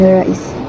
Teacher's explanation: Perkataan nerais mengandung diftong AI, iaitu gabungan vokal A dan I yang dilafazkan bersambung sebagai satu bunyi yang pekat, menjadikan sebutannya lebih lancar dan mencerminkan ciri khas bunyi dialek Melayu Sarawak seperti dalam sebutan nerais.